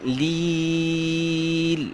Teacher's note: یا مدہ ہے یا پر جزم اس سے پہلے زیر لیل لمبا کیا لیل کیونکہ یا کے اوپر جزم اس سے پہلے زیر